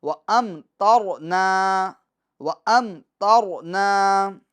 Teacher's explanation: را ساکن سے پہلے والے حرف پر زبر ہو تو را کو ہم پور پڑھتے ہیں